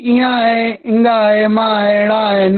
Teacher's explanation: ये जितने भी पंचमाक्षर हैं इन सभी का उच्चारण स्थान नासिका है।